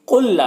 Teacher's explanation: قُلْ لا، یہاں پر قاف حروف مستعلیہ میں سے پر پڑھیں گے، اور یہاں پر لام ساکن حرف ہے اور یہ لام مشدد حرف ہے تو یہ ساکن والا لام اس مشدد والے لام کے ساتھ مدغم ہو جائے گا، اور اس ادغام کو ادغام مثلین کہتے ہیں، اسے بغیر غنہ کے پڑھتے ہیں۔